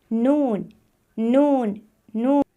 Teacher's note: जड़ों को लगता है तो यह हर्फ अदा होता है और जब हम इस हर्फ को अदा करेंगे तो आवाज नाक से बाहर आएगी और यह हरूफ गुन्ने में भी शामिल है ने के बारे